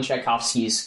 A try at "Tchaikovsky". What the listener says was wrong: Is that the proper way to say Tchaikovsky? Chai. Tchaikovsky. It might make you cough.